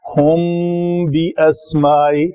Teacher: میم کے بعد اگر حرف با آ جائے تو یہاں پہ اخفاء ہوگا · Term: اخفائے شفوی